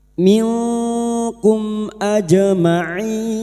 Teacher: jim sukun yang mati asli di tengah kalimat qalqalah sugra